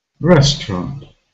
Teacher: so the first syllable is stressed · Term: stressed syllable